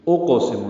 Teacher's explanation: اقسم میں حمزہ اقصی حلق سے بالجہر ادا کریں گے اور قاف ساکن ہے، اس پہ قلقلہ ہے، اس کو پر پڑھیں گے۔ اقسم، لا اقسم نہیں پڑھنا، لا اقسم، سین اور میم کو جلدی پڑھنا ہے۔